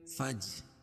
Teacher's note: فج یہ الف کی فا کے بعد جو الف ہے یہ نہیں پڑھی جائے گی, جیم میں ملائیں گے فا کو جیم میں, اور جیم حروف قلقلہ میں سے ہے اور اس کے اوپر جزم ہے تو یہاں قلقلہ ہوگا